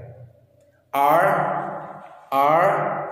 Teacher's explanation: देखिए, जब हम लेटर R प्रोनाउंस करेंगे, लेटर R प्रोनाउंस करते वक्त हमारा जो टंग होता है वो पैलेट की तरफ जाता है और ऊपर वाइब्रेट करता है